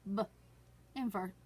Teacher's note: kind of clip off the sound so we can have the pure sound of b instead of buh